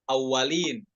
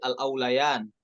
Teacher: Nah, kita perhatikan pada kata al-aulayan, nantabi ila sukunil waw wa fathul lam wal ya, ya. Al-aulayan bukan dibaca awalin ya, tapi al-aulayan, wawunya sukun, bukan tasydid.